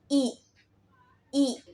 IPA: i